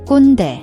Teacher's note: The kkwon has a KK sound, which is a tense, unaspirated K. Hold your breath slightly before releasing the K sound, like a slight glottal stop.